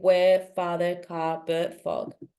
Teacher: if they want to try speak British English you can do it but the principle is that you don't read the RS